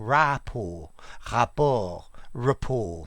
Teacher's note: in english it's got a schwa at the beginning